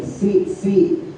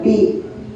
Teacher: fa keluar angin fi bukan pi ya